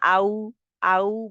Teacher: पेश के लिए भी होठ गोल होते हैं और जब ये वाओ का मखर हम कर रहे होते हैं तो इसके लिए भी होठ गोल होते हैं